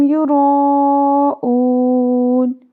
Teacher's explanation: را پور پڑھیں گے کیونکہ را کے اوپر زبر ہے